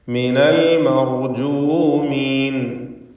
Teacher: മിൻ എന്ന സുക്കൂൻ ഇൽത്തിഖാ സാക്കിനൈൻ പരിഹരിക്കാനായി ഫത്ഹായി മാറ്റപ്പെട്ടു